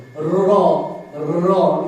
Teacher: র যে কাঁপছে, এটাকে বলে কম্পিত বর্ণ